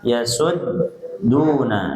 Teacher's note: su-nya boleh monyong ibu karena dhammah ya, kemudian ketika masuk ke dal dibalikin lagi